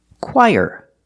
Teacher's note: put the stress on the first syllable